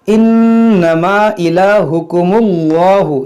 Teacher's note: اس کو موٹا پڑھیں گے کیونکہ اس میں جلال سے پہلے پیش ہے